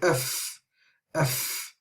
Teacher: we can hear a lot of air running through the first sound and because if the air is running through therefore there is